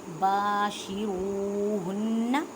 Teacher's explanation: فالآن باشروہن, الف مدہ کا قاعدہ کریں, واو ساکن سے پہلے پیش, واو مدہ کا قاعدہ کریں, اس کے ایک الف کی مقدار میں کھینچ کر پڑھیں